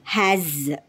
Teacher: in has s is representing the sound of Z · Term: z sound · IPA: /z/